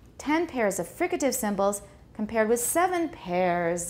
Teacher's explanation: Because pairs is repeated, so we don't want to stress pairs.